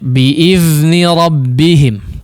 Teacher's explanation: Dzalnya ujung lidahnya keluarkan ya. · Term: huruf dzal